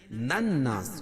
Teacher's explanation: نناس نون مشدد اس میں غنہ ہوگا، اور الف سے پہلے نون کے اوپر زبر ہے تو الف مدہ، اور وقف کی صورت میں سین کے نیچے جو زیر ہے اس کو جزم سے بدل دیں گے، بین الناس، اور یہ مد عارض وقفی ہوگا۔